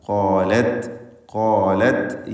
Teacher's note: ഖാലത്ത് ത് എന്ന് ശബ്ദം ചലിക്കരുത്. ഖാലത്ത് ഹംസും ഷിദ്ദത്തും ഒരുമിച്ച് ചേരുന്ന ഒരു ഹർഫാണ് താ.